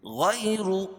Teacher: یا ساکن سے پہلے زبر ہو تو یا لین، اس کو نرم آواز کے ساتھ جلدی ادا کریں گے، اور را پر زبر یا پیش ہو تو را پور ہوتی ہے۔